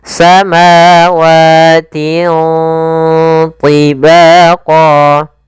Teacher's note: cara membacanya suara tanwinnya disamarkan ke huruf ta, atau membacanya di antara bacaan izhar dan idgham. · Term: bacaan ikhfa